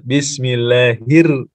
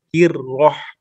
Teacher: Kalau ro itu tasdid, maka kalau huruf sebelumnya kasroh, bismillahir, masuknya tarkik, keluarnya tafkhim. Hirroh. Ya, bismillahir, tarkik ya, tipis, hir, terus keluar tebal, hirroh.